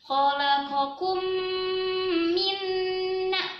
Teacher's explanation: sekarang minna itu juga dijaga dengung yang lama